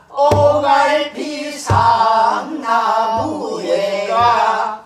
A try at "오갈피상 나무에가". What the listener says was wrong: 나가 너무 길으면 안 돼.